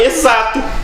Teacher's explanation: O X aqui está com som de Z, né? Tem que tomar cuidado.